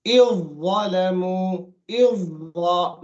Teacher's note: The first letter doesn't have a sukoon, the second letter has a shadda, telling you the first letter is completely gone, it's merged into the second letter